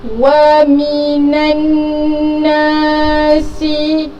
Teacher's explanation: huruf nun yang berbaris atas ini akan terus masuk ke dalam huruf nun yang bersabdu